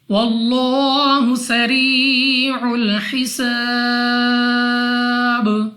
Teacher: لام آف اللہ سے پہلے حرف پر زبر ہے، تو اس لام آف اللہ کو پر یعنی موٹا پڑھیں گے اپنی منہ اور آواز کو کھول کر، اور دوسرا لام کو 2 سیکنڈ تک کھینچ کر پڑھنا ہے۔